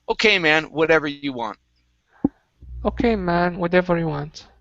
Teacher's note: And the last word for you is right here, whatever. Okay, give me a flap T here.